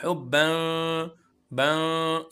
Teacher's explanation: नाक से। नाक से जब हम नरमी के साथ आवाज निकालेंगे। जबान बिल्कुल नरमी के साथ ऊपर तालू के साथ टच करेंगे तो ये इफा की साउंड निकलेगी। हुब्ब बन ये वाली साउंड इफा की है।